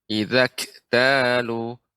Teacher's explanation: untuk kaf yang sukun sifatnya adalah hamas ya. Terbukanya pita suara ya.